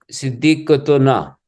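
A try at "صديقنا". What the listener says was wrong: नहीं, ता नहीं पढ़ानी, ता तो यहाँ पे है नहीं ना, सिद्दीकु ना।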